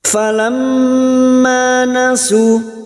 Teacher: Mim yang bertasdid gunnah musyaddadah kita dengungkan selama 3 harakat. Falamma nasu, ma fathah diikuti alif, 2 harakat kita panjangkan mad tabi'i.